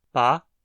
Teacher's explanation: O segundo tem uma frequência ascendente, de média para alta